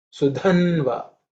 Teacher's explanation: Dha is the fourth letter in the ta varga, so it has to be aspirated.